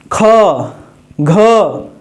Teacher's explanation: घ बोलते हैं तो गूंजता है और हवा भी ज्यादा निकलता है तो यह जो हो जाएगा महाप्राण और घोष दोनों वर्ण हो · ख बोलते हैं तो गूंजता नहीं है लेकिन ख बोलने में हवा ज्यादा निकलती है